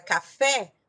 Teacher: quando eu tenho por exemplo a palavra café a sílaba forte é o fé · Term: sílaba tônica